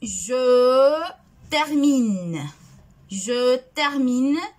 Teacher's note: La prononciation du verbe termine au présent ne prononce pas le E final.